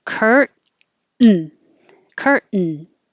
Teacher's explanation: once you're putting your tongue up there in the T position, you just hold it there and make the N noise.